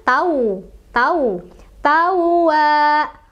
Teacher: wa-nya ada tasdidnya agak ditekan.